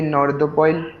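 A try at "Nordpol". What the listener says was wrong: North पोइल कहां दिख रहा है आपको, नॉर्थ, ये तो नॉर्थ पढ़ लिया अपन ने, ये बनेगा पोल, नॉर्थ पोल।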